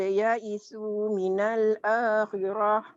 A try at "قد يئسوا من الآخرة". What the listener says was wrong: Minal akhirah. Qad. Di sini tarik tadi ya. Minal akhirah. Tak ada yang panjang. Qad ya isu.